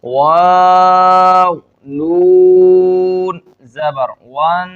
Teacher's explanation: یہاں پر کیونکہ نون مشدد ہے، نون پر تشدید ہے، اس وجہ سے ہم یہاں پر غنہ کریں گے۔